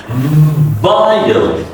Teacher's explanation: So when it's a W, V I L E, you sound like a V. You put your upper teeth on the lower lips.